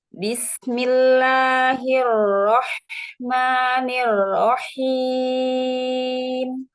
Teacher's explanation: ini takrirnya hilang Bu jadi ke punggung lidahnya tidak ditempel di gusi itu tidak bisa menghasilkan takrir